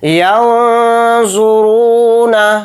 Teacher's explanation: را کو موٹا پڑھیں گے کیونکہ را کے اوپر پیش ہے